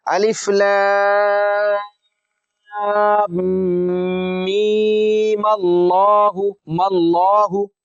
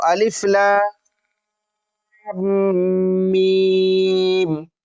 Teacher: اور اگر ہم ملا کر پڑھیں گے اس کو تو میم کو زبر دے کر اور لام سے ملا دیں گے، اس طرح سے پڑھیں گے، یہ میم کو زبر دے کر یہاں سے لام سے ملا دیں گے اور اس کو اس طرح سے پڑھا جائے گا، میم اللہ پڑھیں گے، میم اللہ۔ وصل کی صورت میں جب ملا کر پڑھیں گے اس صورت میں ہم میم کو زبر دے کر پڑھیں گے اور میم کو لام سے ملا دیں گے، الف لام میم اللہ ماللہ۔